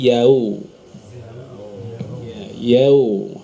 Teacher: Huruf waw ketika sebelumnya fathah sering terbaca dengan vokal O.